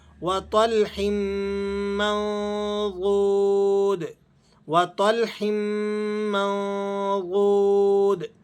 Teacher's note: نون پر آپ نے اخفا ادا کرنا ہے، غاد حروف اخفا میں سے ہے۔ 14 وہ حروف جو نون ساکن یا تنوین کے بعد آ جائیں تو آپ نے وہاں اخفا ادا کرنا ہے، ان میں سے غاد بھی ہے۔